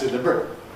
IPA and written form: dɪˈlɪbrət (deliberate)